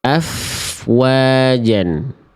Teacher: Huruf wau ini posisinya maju. Si kedua bibir itu seperti pengucapan huruf U.